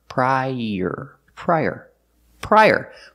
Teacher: use the Y sound like in yellow to link the two vowels